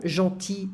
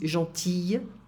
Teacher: I don't pronounce the L here in the masculine form.